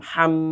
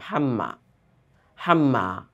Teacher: তাসদিদ হলে অবশ্যই তাকে একটু আটকে ধরে পড়তে হবে, তাহলে শুনতে ভালো লাগবে। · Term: গুন্নাহ